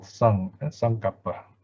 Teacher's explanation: And then notice the n has got a superior dot, there's a dot over the n, so it's a value of ng, saṅkappa, right? In fact, before the k, you have to pronounce it saṅ, in other words, nasal, saṅkappa, right?